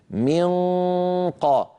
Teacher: ننطق لما ننطق نو مخفاه عند قاف مثل من قا م اقصى اللسان اللي هو مخرج القاف ينقفل تماما ويلامس الحنك اللحمي